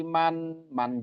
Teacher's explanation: man jelas dibaca jelas Jelas karena bertemu dengan hamzah di depannya itu izhar halqi